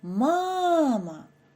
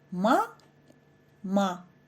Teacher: у слові мама сильніше вимовляється перший склад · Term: наголошений